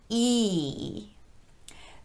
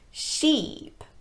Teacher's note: it's almost touching the roof of the mouth but not quite this is a very tense vowel so the muscles of the tongue really need to be engaged on this one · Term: long e